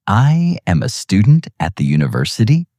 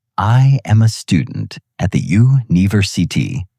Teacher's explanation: They make a statement, but their voice goes up at the end like it's a question. · The voice drops at the end like a hammer. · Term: uptalk